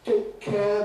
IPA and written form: ˈteɪk ˈkeə (Take care)